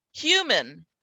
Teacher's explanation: there is no vowel sound here between the M and the N. Human. And we go straight from the M to the N.